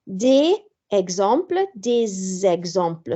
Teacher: So mae S yn swnio fel Z yna hefyd i helpu'r ynganiad, so mae'n liaison.